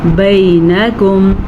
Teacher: میں نے بھی آپ کو بتایا تھا نا، واو لین، واو ساکن سے پہلے زبر ہو، اور یا لین یا ساکن سے پہلے زبر ہو، ان دونوں کو لمبا نہیں کرتے